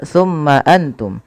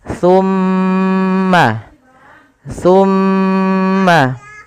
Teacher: ketika mim itu berharakat tasdid wajib ditahan suara gunahnya ya tidak boleh langsung tumma Antum tapi tahan dulu suara mimnya